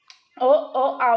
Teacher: ఓ ఓ ఔ అనేది మనకి పలుకుతున్నప్పుడు కంఠం నుంచి బయటకి వస్తుంది సౌండ్ సో వాటిని కంటియోస్టములు అంటారు. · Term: కంఠోష్టములు